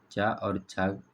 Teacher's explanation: चा और छा वर्ण का उच्चारण स्थान हमारा ताल हो जाता है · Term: तालव्य